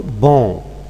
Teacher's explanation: a slash nasalization in this case here okay regressive assimilation here we have got a vowel followed by a nasal sound which is a consonant it affects its quality